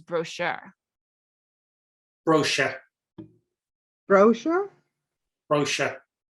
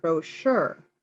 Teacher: so you emphasize the first syllable